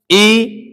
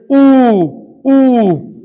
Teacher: ऊ हो गए, होठ गोल हो गए